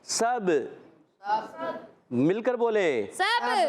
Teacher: تو یہاں سین کو با سے ملانا، با عرف قلقلہ میں سے، سین عرف اصلیہ میں سے، عرف صفیریہ میں سے، سیٹی کے ساتھ ادا کریں گے۔